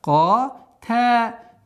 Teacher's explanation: твердое произношение долготы с согласовкой фатха